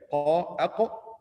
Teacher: from the end of the tongue or the root of the tongue, qaf